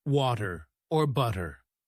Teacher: the flap T sound, where the T sounds like a soft D